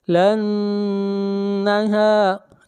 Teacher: نون کے اوپر شد ہے، آواز ناک میں جائے گی، غنہ ہوگا